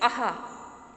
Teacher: ये जो विसर्ग लगा होता है उसका जो उच्चारण होता है वो हा की तरह होता है